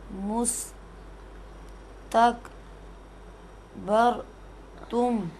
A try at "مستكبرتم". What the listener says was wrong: شاباش.